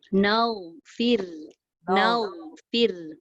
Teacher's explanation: Ghain tak ada qalqalah. Ra pun tak ada qalqalah.